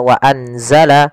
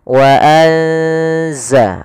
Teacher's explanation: Yaitu di sini kita mendapati ada nun yang berharakat sukun atau yang tidak dikasih harakat bertemu setelahnya huruf zai yang mana zai termasuk salah satu huruf ikhfa. Maka cara membacanya itu kita samarkan nunnya kepada huruf zai. Bukan dibaca wa anzala tapi juga bukan wa wa enggak bisa dimasukkan ke za wazzala tidak bisa.